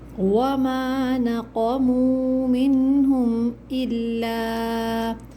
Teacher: وما پر میم کے بعد جو الف ہے، الف مدہ ہے، 2 کاؤنٹس کھینچیں گے۔